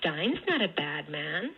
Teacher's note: the f0 goes way back down to the bottom of the speaker's range and then only kind of trends up at the very end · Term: phrase accents